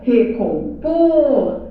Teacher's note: Por é a sílaba que manda na palavra, é a sílaba tônica e não vem com acento.